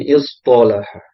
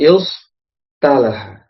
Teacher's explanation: Sod, to itu kan tebal dibandingkan ta kan tipis ya.